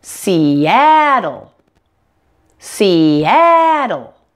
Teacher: make sure the a sound is much louder and longer than the other two syllables around it · has 3 syllables and the middle syllable that ah is the primary stress syllable